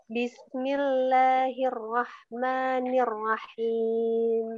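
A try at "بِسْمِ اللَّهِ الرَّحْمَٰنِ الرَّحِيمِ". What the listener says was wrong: Nah, jangan buru-buru dan irrahmanirrahim, jangan buru-buru. Ya, jangan buru-buru.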